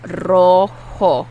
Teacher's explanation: And the J is pronounced like an H. Rojo. And the O's are Spanish O's.